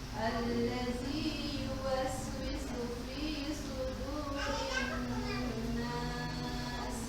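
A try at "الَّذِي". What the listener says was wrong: Alladzi, tidak allazi, tapi alladzi.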